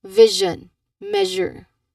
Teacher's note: Vision measure. So there's clearly vibrations in there which means that this particular sound is a voiced one.